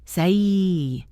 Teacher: The sound A in say is E sliding into I, S-E-I. Robotic speakers often clip these vowels and make them short and pure.